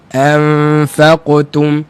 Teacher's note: kita dapat Qalqalah huruf qaf itu tak terputus dengan huruf ta